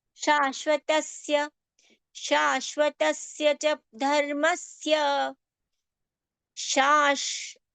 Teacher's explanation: Both the sh complete and the half are palatal, as in cha cha ja jhaya.